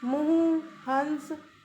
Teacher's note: अनुनासिक, इसका उच्चारण नाक और मुंह दोनों से होता है।